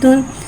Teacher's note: ता के पास 2 पेश यानी कि तनवीन है, इसे होठों की गुलाई के साथ अदा करके पढ़ेंगे। ता 2 पेश तुन।